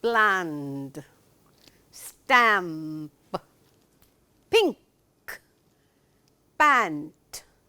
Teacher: a difference between the beginning Blends and the end Blends is the end Blends will have a nasal tone to it whereas the beginning Blends will not